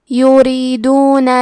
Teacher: کلمت یریدون میں کیونکہ را کے نیچے زیر ہے تو یہاں را کا حکم ہے ترقیق، مطلب ہمیں حرف را کو پتلی آواز میں پڑھنا ہے۔